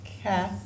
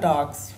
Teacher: cats so we had an ass what about dogs okay so orthographically we had an s but the actual sound we add is a z